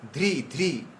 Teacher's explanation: এখানে একটু জোর দেবেন, কারণ ধ হচ্ছে মহাপ্রাণ, ধ্রি ধ্রি, ঠিক আছে?